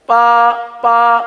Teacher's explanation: बा को पा पढ़ दिया जाता है